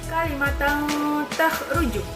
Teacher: ikhfa ini cara bacanya adalah disamarkan atau seperti mengucapkan huruf am